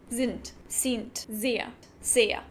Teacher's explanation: where Germans use a soft S in the beginning of a word, people from Austria may use a sharp one